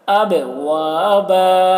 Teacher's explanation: با میں قلقلہ، با میں آواز ٹکرائے گی